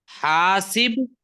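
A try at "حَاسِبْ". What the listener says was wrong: हासिब अमर है, अमर क्या है, जज्म आती है। हासिब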